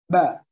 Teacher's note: Ab. Setelah bibir saya menekan dengan sempurna, ab, lalu makhraj saya terbuka. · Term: qalqalah